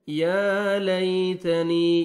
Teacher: گے، تا کو باریک پڑھیں گے، یا لیتنی، یا مد ہے، یا ساکن سے پہلے کسرہ، نون کو آپ نے 1 سیکنڈ کھینچنا ہے